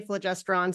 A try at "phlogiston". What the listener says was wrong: I think it's pronounced phlogiston, but there's no r.